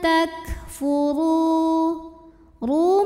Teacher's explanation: karena ada wau sukun didahului baris damah cara bacanya panjang rnya dua harakat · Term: Mad Thobi'i doohiri